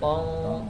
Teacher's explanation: lidah belakangnya naik ke atas pas dengungnya itu tong. Tapi enggak sampai nyentuh dia naik enggak sampai nyentuh.